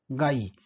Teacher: व चा उच्चार हा उ या स्वराच्या उच्चाराप्रमाणे होतो आणि य चा उच्चार हा ई या स्वराप्रमाणे होतो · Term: अर्धस्वर